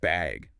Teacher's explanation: Or even just bag, with a rising tone.